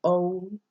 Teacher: It's pronounced like a long O. So O, where you kind of close your mouth at the end.